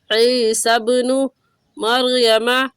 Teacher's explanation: عین حلق کے درمیانی حصے سے نکال کر پڑھا جاتا ہے